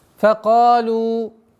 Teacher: при остановке вместо 4 огласовок становится 2. Факалу. Уходит в естественное удлинение.